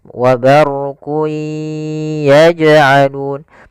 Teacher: jim ada bacaan qalqalah, yaitu huruf jimnya memantul, maka dipantulkan huruf jimnya